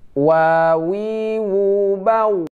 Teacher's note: Wa itu tidak dempet antara atas dan bawah, tidak dempet. Wa, tapi tidak dempet, tapi hanya monyong saja, ya.